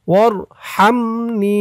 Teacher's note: হার উচ্চারণটা গলার ভিতর থেকে চিকুন করে বের করতে হবে